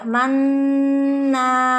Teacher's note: Nah, nun bertasdid yaitu wajibul gunnah, ditahan dan ditekan. Kemudian ada mad tabi'i manna, ya jadi ditasdidkan, ditahan, ditekan, kemudian dipanjangkan.